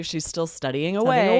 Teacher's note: We go up on the away and that's how we emphasize how long it's been. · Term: unique intonation